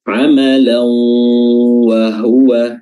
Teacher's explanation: ke huruf wau disertai dengan gunah disertai dengan suara hidung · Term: idgham bi gunnah